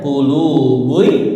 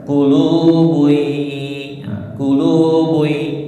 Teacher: Ketemu huruf ya. Jadi masuk ya melebur dengan gunah langsung masuk ke ya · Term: idgam bigunah